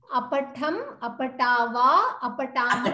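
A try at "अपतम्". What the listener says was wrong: Apatama. Yeah, you said apatama. There is no, it's halanta, apatam. No, there is halanta.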